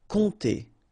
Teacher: really like a nasal here, on, and then this P is not pronounced.